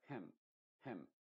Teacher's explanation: Tampoco es hem, con la boca muy abierta, muy pronunciada, sino que tiene que ser muy, muy apagada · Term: I modificada